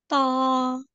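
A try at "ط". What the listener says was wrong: एक तो इसको हैवी, इसको खींचना नहीं है।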